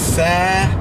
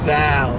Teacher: tha is voiceless and the thal is voiced. And in linguistic terms, what that means is that when something's voiceless, there's no vibration.